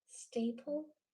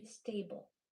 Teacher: Say staple but change the p to a b. So it's the same mouth shape. You're just adding vibration. So when you do that, staple changes to stable.